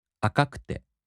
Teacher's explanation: In the flat-type, the accent falls on the third to the last mora.